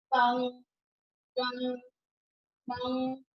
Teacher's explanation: अनुस्वार में क्या होता है, उच्चारण करते समय हवा केवल नाक से ही बाहर निकलती है।